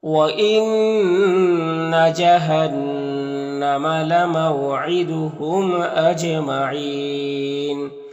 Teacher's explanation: व इन्ना नून मुशद्दद गुन्ना होगा, जहन्नम का नून मुशद्दद गुन्ना होगा